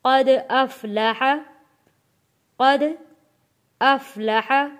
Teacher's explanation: قد دال حروف قلقلہ ہے، آواز واپس پلٹ کر آئے گی۔